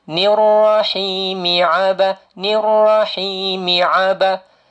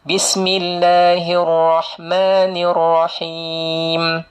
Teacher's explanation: Bila sambung saja hi ni, maka jadilah dia mad asli.